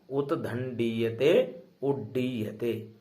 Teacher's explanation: ड का उच्चारण स्थान क्या है, मूर्धन्य